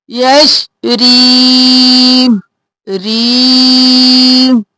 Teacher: یش، اب یش ہلانا نہیں ہے، ساکن رکھنا ہے، یش ریم، را کو باریک کیونکہ نیچے زیر ہے اور یا مدہ ہے تو را کو کھینچیں گے، یشری نہیں